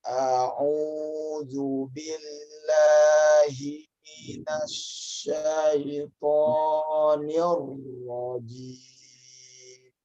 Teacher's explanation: Jadi ini sebenarnya bukan permainan nada, tapi karena memang panjang pendeknya seperti itu. A'udzu, u-nya udah panjang ya. Billah, la itu panjang lamnya.